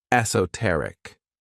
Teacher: the stress is on that third syllable, esoteric. When we describe something as esoteric, we're talking about something that's really understood by a small group of people because they have knowledge or interest in that thing. · 4 syllables, and the stress is on that third syllable